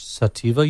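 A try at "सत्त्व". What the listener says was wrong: Sattva. Sattva. Sattva, but the V is pronounced as a W.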